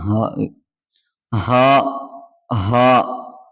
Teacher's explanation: ഏറ്റവും താഴെ നിന്നാണ് വരുന്ന അക്ഷരമാണ് ഹാ എന്ന അക്ഷരം